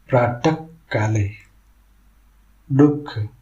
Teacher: उदाहरण प्राक काले दुख यहां विसर्ग गले से ख जैसी ध्वनि बनाकर उच्चारित होता है। उच्चारण करते समय गले से एक फुसफुसाहट ख जैसी आवाज निकलती है। · जब विसर्ग के बाद क या ख वर्ण आते हैं तो विसर्ग का उच्चारण हल की ख ध्वनि के साथ गले से करना चाहिए। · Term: जिह्वा मूल्य